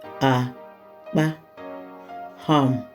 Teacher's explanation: we know the first vowel is re, and the second vowel is mi